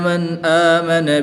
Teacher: نون ساکن میں اظہار ہے، نون ساکن کے بعد حرف حلقی میں سے حمزہ آ رہا ہے تو یہاں پر اظہار ہوگا، نون ساکن کو خوب ظاہر کر کے پڑھیں گے